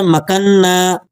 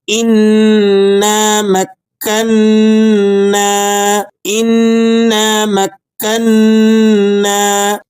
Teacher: میم کو آپ نے کاف سے ملانا ہے اور کاف کو نون سے ملا کر نون کو پھر الف کے ساتھ تھوڑا سا کھینچ کر ادا کرنا ہے